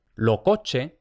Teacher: cuando digo pierde no es que se aspire, es que se pierde totalmente la S